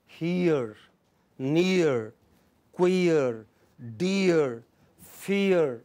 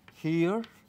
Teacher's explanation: the tongue glides from front, closed, unrounded position to central, near half closed, unrounded position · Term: diphthong